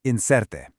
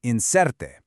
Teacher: That R sound is just a really soft, quick tap of the tongue